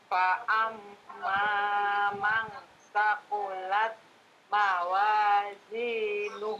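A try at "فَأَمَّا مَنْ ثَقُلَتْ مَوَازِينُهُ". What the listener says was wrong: Nah, itu fa'amma mang sakulat itu baru ikhfa'nya saja. Gunnahnya belum ada. Ikhfa dengan gunnah. Jadi fa'amma mang sakulat. Fa'amma man saqulat mawazinu.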